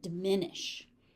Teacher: Short first syllable, second syllable has all the stress.